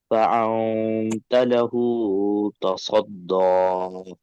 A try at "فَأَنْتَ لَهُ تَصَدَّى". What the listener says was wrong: وہ کو زیادہ کھینچ دے رہے ہیں آپ. مد حکمی کو آپ جو ہے مد متصل بنا دے رہے ہیں، آپ اتنا زیادہ نہیں کھینچنا ہے اس کو. فَأَنْتَ لَهُ تَصَدَّى. فَأَنْتَ لَهُ تَصَدَّى.